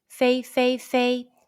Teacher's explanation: combine the initial F, the final A, and the high pitch first tone all together